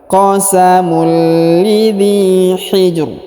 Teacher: huruf ja berharokat sukun, maka kita pantulkan dan ro-nya kita berikan bacaan agak tebal ya